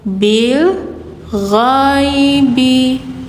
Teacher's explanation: Gha mengalir, gha jadi nggak go tapi gha, bil ghaibi.